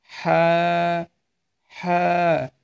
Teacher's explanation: এ হরফটি উচ্চারণ হবে আপনার গলার মাঝ বরাবর